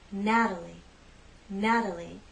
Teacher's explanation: it's the first syllable that's stressed, Natalie, Natalie. The T is part of an unstressed syllable, so we use the flap T.